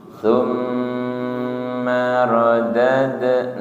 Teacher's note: Sa, ujung lidah menyentuh ujung gigi.